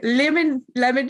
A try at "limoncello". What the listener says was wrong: I know it's not easy, but it's not lemon, it's limon, like to E.